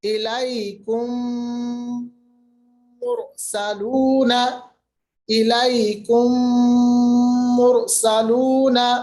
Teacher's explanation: جو میم ساکن ہے وہ دوسرے میم میں مل جاتا ہے، اور ملنے کی صورت میں تھوڑا دیری کے لیے، تھوڑا دیر کے لیے آواز کو ہمیں ناک کے بانسے میں لے جانا ہے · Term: ادغام